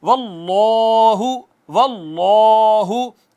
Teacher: اس میں جلالت کا ما قبل مفتوح ہے، اس کو مفخم پڑھا ہے، پر کر کے پڑھا ہے